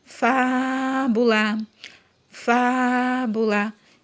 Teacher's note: o fá eu demorei mais falando · eu demorei mais falando o fá. Então, a sílaba tônica é fá. · na palavrinha fábula, a sílaba tônica é a antepenúltima